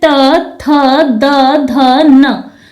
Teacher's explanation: हमारी जीव अंदर की तरफ से ऊपरी जबड़े के दांतों को स्पर्श करती है तो इसलिए इसे दंत वर्ग में रखा गया है अब फिर